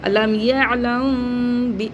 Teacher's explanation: तो इस तरीके से इसका जो मखरज है वो इसी तरीके से अदा होगा कि मीम साकिन के बाद बा आ रहा है। तो यहां पे इफा शफी होगा। यानी होठों में हम आवाज को रख के पढ़ेंगे।